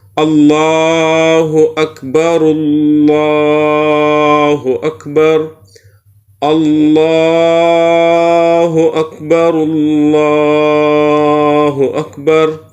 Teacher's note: اگر وصل کرے تو پھر اکبر کے راہ کو اللہ کے لام کے ساتھ ملائے